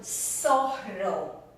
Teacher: So the zeta, this letter, sounds like an S in Latin America